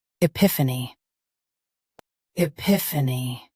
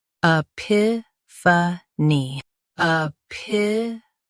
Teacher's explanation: US starts with I. UK starts with a.